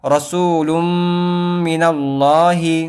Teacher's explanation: تنوین نون ساکن کو تشدید والی میم سے ملا کر گنہ کے ساتھ پڑھیں گے، تو ہو جائے گا رسول من اللہ۔